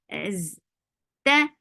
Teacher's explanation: there is no flow of sound in ta